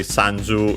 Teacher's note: Sanju is accented on the sa, on the first syllable.